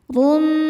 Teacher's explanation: Huruf ra dibaca tafkhim karena berharakat dhommah tanwin. Cara bacanya ditebalkan. Rum. Kemudian ada idgham bighunnah karena ada tanwin dhommah menghadapi huruf mim.